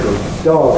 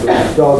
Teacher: good dog with that long D